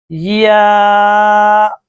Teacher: بحالت مدہ منہ کے خالی حصہ کی ہوا سے ادا ہوتی ہے